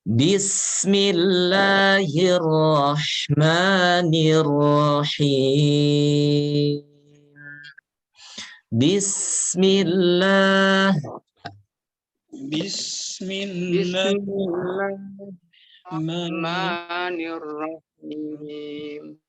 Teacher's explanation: untuk huruf sin alirkan. Suara dialirkan. Ya, Jadi jangan diputus. Sin, insya Allah kita akan mengenal nanti sifat sin itu diantaranya adalah rokhawah.